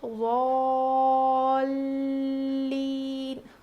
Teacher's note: یہاں پر لام پہ تشدید ہے تو یہاں پر ہم تھوڑا وزن روکیں گے، یعنی ضالین.